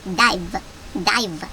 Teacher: V는 쓸 때 우리가 비읍이라고 발음된다고 쓰지만 맨 앞이든 맨 뒤든 윗니를 아랫입술에 물고 v 이렇게 소리를 내야 된다고 합니다